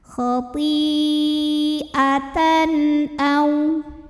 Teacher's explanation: Halqi itu tenggorokan, jadi huruf tenggorokan yaitu hamzah. Maka tanwin ini kita bunyikan dengan jelas. Jadi bunyinya masih bunyi asal n. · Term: izhar halqi